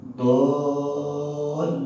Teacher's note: Sekarang lafaz dolla. Do kan panjang dulu tuh. Panjang dulu baru ke lam karena ada syiddah di lam. Dolla. Nah, udah ke lam tuh. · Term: mad lazim mutsaqqal kalim